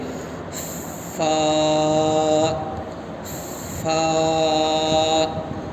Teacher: سامنے کے اوپر کی دو دانت کا کنارہ اور نیچے کے ہونٹ کے گیلا حصہ سے فا نکلتا ہے۔ اگر ہم سامنے کے دو دانت کو لے کر گیلے حصے میں رکھ کر اگر پڑھیں گے تو فا کا مخرج صحیح سے ادا ہوئے گا، جیسے فا فا۔